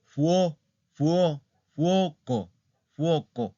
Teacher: la sílaba tónica está en la O.